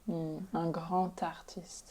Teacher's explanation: Yeah, this one's interesting because it's actually a T sound. When it's a D, and you get that liaison, it's a T.